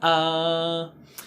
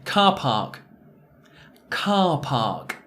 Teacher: do consider the position of your tongue in your mouth uh down and back uh open back sound